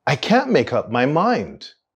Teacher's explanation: there's a linking between the words make and up